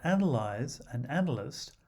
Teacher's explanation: analyze and analyst are stressed on the first syllable